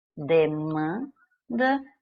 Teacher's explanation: quando o N finaliza sílaba, ele está apenas nasalizando a vogal anterior. Ele não é pronunciado, ele apenas empresta um som nasal para a vogal anterior.